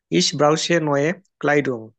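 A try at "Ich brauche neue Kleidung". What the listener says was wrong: ইস ব্রাউখে নয় ক্লাইডুং, আমার নতুন কি প্রয়োজন? না, ব্রাউখে হবে কারেক্ট। সিএইচ এর আগে যদি আমার আ, ও আর উ থাকে, তখন ওই সিএইচ এর উচ্চারণটা আমরা ক বা খ এর মতো করব।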